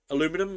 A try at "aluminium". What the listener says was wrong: Aluminum's stupid. It's spelled aluminium. There is no ooh in there. It's aluminium. Where do they get aluminum? ALUMINIUM. Aluminium.